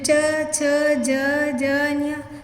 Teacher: तो यहाँ पे यह इसका उच्चारण स्थान है, यानी कि इनका उच्चारण करते समय हमारी जीभ है जो तालु को स्पर्श करती है